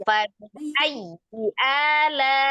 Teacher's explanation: Ini kan di ya tasdid ya. Yang di nabar itu ya tasdidnya, bukan kasrohnya. Ai. Ya, y-nya biasa.